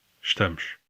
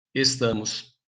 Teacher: you can hear the difference in the S sounds, sh in European Portuguese and s in Brazilian Portuguese. You can also hear the vowel reduction in the European word, with the first vowel basically dropped.